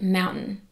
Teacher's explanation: you can barely hear the t in mountain